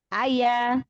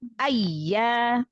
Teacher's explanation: Naber itu gunanya untuk menjaga tasdid. Karena kita tahu tasdid itu berarti hurufnya ada 2. Kalau enggak dinaber, khawatir nanti huruf iya-nya terdengarnya 1. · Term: Ya tasdid